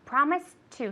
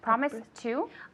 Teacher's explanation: they both have a t sound we can link it so it sounds like one word promise two one more time yes i promised uh promise two